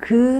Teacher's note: 그래서 이런 생각들을 깨주고 싶었고, 아이들도 한글 원리를 조금 호기심을 가지고 쉽게 접근을 하려면 어떻게 해야 좋을까라는 그런 고민을 하다 보니까 직접 움직여 보면서 한글 원리를 알면 쉽게 접근할 수 있겠다 해서 한글이 가 나오게 되었습니다. 자음 그 소리는 혀가 뒤로 밀리면서 혀뿌리가 목구멍을 막으면서 나오는 그런 소리예요